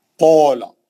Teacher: قول موٹا، مد اصلی ہے، گول منہ سے موٹا آواز.